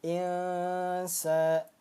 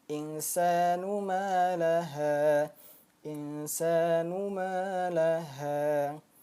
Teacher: termasuk ke dalam ikhfa hakiki, dibacanya dengung, samar, dan ditahan 2 ketukan atau 2 harokat